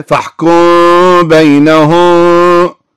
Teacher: يرافق الإخفاء الشفوي هنا غنة في الميم بمقدار حركتين، وتكون الميم عند الباء مخفاة كما أشرنا إلى ذلك.